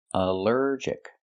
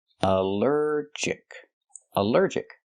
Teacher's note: Allergic is three syllables. Allergic. The stress is on the second syllable. Allergic. Allergic.